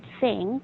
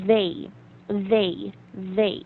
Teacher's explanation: for th it's totally different because the tip of your tongue is between your teeth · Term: th sound